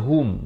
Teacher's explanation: Fa'aqabahum idhar syafawi, sempurnakan saja hum, bukan hum. Ha baris dhamma bunyi hu, bukan bunyi ho. Bila bertemu mim jadi hum.